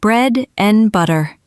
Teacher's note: And becomes un or just n